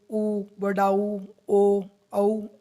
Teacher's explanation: इनका उच्चारण स्थान ओष्ठ होता है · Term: ओष्ठ्य स्वर